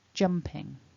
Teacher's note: the jump gets the stress in that two-syllable word, jumping